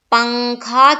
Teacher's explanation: نون کی آواز کو ناک میں چھپانا ہے اور چھپا کر پڑھنا ہے۔ نو کے زبان تالو سے ہٹا کر، جیسے ہم اردو میں پنکھا کے نون کو پڑھتے ہیں، پنکھا جس طرح پڑھتے ہیں اسی طرح ہم پڑھیں گے اخفاء کرتے ہوئے۔